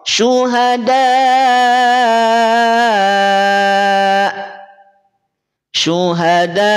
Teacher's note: ketika diucapkan hamzah itu jangan sampai suara kita dialirkan, tapi suara kita menjadi terhenti. Contoh, syuhada, syuhada. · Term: hamzah sukun